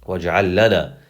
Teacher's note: So instead of saying waj'al lana, you're actually going to say waj'al lana. You're just going to combine the two lams together to make it easier. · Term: idgham